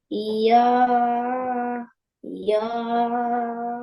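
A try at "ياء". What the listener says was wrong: Yaw not. It's not yaw. Ya. English, what we say when we want to say okay. Yeah, yeah, yeah, yeah. This is what ya and ya.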